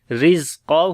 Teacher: را کو باریک پڑھیں گے، زیر ہے اس کے نیچے، اور زا کو تھوڑا سا سخت پڑھیں گے اور قاف کو موٹا پڑھیں گے، ہو کو لمبا کریں گے.